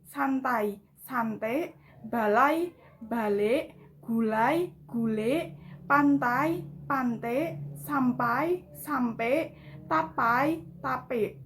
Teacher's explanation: pergantian diftong ai menjadi e